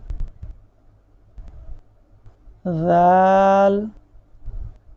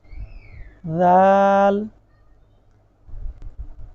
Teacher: پروناؤنس کرتے وقت دانت کے درمیان میں زبان ہوگی ہماری